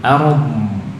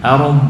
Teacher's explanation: Alirkan, rokhwahkan, wal arum, ya, setelah ro sukun, dhadnya juga disukun, arum. Dan lebih jelas dhad daripada ro-nya, karena ro itu tawassut, ya, sedangkan dhad rokhwah, maka alirannya lebih panjang dhad, ya, ro cukup nah, dhadnya lebih panjang, arum.